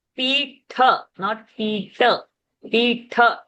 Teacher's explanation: that tha is a mahaprana. You have to expel lot of power.